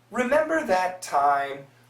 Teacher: many Americans, when they say remember, they just say member.